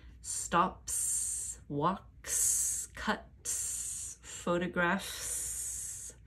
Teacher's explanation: verb some verbs end with unvoiced sounds p c t f because my voice is off when I end these verbs my voice stays off when I make the sound for S